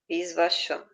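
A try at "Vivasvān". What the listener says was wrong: Não, Vivasvam. Vivasvam. Não, sem o S no começo. Vivasvam.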